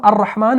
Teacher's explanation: یہاں پر حروف شمسی کے حروف میں سے را آ رہا ہے تو الف لام دونوں کا تلفظ نہیں ہوتا